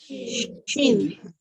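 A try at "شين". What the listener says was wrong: Jangan berakhir dengan M. Bukan. Dia tak boleh tutup mulut. Jangan Shim. Jangan rapatkan bibir. Shin.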